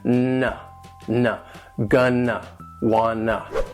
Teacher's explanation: there is no T sound in 2. It basically goes from that N sound, that N, straight into the schwa.